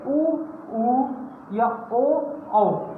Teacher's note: हमारा जो मुंह होता है साथियों वो गोल हो जाता है। ठीक, तो इसका मतलब ये वृत्तमुखी।